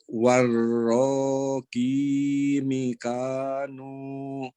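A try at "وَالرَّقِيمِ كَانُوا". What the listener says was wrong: Oke, mi-nya dibaca pendek. Warroqi mikanu.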